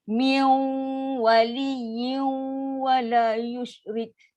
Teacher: Min waliyyin adalah kategori idgham naqis. Maksud tak sempurna 50-50. 50 bunyi dengung, 50 bunyi waw. 50 bunyi nun, 50 bunyi waw.